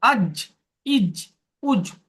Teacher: জিমের মাখরাজ জিভের মাঝখান উপরের তালু।